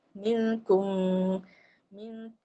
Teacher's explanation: bila masuk makhraj mim dia dekat bibir jadi bibir kita ni tertutuplah